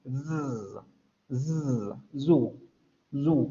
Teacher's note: Es una alveolar fricativa sonora. · La lengua va a subir hacia los alvéolos, va a generarse turbulencia en la salida del aire y la diferencia es que van a vibrar las cuerdas vocales